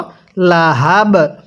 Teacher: এখন কলকলা করে পড়ব, কারণ কফ বা জিম দাল এগুলো হলো কলকলার হরফ